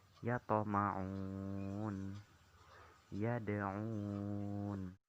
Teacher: Qalqalah sugro terjadi apabila huruf qalqalah itu mati sukun pada kata asalnya, pada umumnya terletak di tengah-tengah kata. Cara membaca qalqalah tersebut yaitu dengan pantulan tidak terlalu kuat